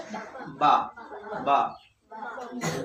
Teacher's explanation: বা শব্দ দুই ঠোঁটে হালকা ভাবে ড্রপ খাবে, ড্রপ, বা বা বা করার কোনো দরকার নাই, কোনো জোর লাগবে না, হালকা ভাবে বা বা।